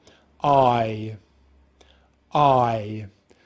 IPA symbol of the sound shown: aɪ